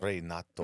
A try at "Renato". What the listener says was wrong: No, it's just Renato. Renato. That's how his name is pronounced. Yeah, but it's Italian, so the E makes an A sound.